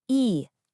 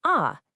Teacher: So, for a sound like e, your tongue is high and forward. For a, it's low and back.